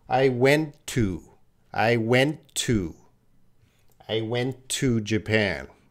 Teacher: blending these two T's so when the native speaker is speaking there's two T sounds but we're not gonna use two T sounds we're just gonna use one T sound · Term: linking and the blending